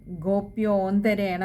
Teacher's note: വിശ്ലേഷണം ഉള്ളതുകൊണ്ട് ഓകാരം നീട്ടിയെടുക്കുക